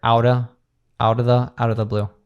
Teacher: we have like the American T or flap T there